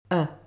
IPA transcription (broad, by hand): ə